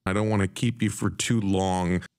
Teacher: the vowel in the word for is reduced so it sounds more like fur · The nasal NG sound in long is produced with that back of the tongue rather than an N and a G.